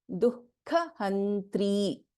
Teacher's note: Visarga and then we have Kha. Kha is a Mahaprana.